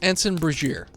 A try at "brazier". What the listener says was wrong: No, not ear. Brazier. Brazier.